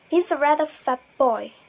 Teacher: So in this sentence, t assimilates to p. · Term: assimilation